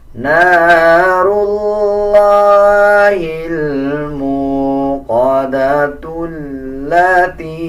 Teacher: اگر ہم اس آیت پہ وقف نہیں کریں گے تو پھر تا کو لام کے ساتھ ملا کے پڑھا جائے گا